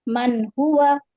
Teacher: نون ساکن کے بعد ہا ہے تو نون کو اظہار کریں گے اور جلدی پڑھیں گے